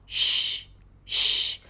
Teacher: To pronounce the shh sound, the tongue goes up. It doesn't block the air, but comes up and almost touches the roof of the mouth. The lips round a bit.